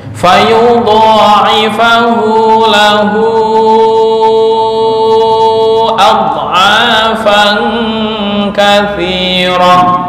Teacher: Hu yang pertama 1 alif, yang kedua 2,5 alif